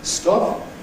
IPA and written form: stɒp (stop)